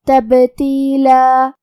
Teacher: یہاں با ساکن ہے تو ہمیں با کو قلقلہ سے پڑھنا ہے، مطلب یہ حرف کو ہلا کے یہ کلمہ کو پڑھیں گے